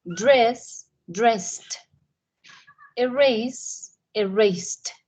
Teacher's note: Aquí, en estos, el ed suena como una t sound. Entonces, como el sonido de una T.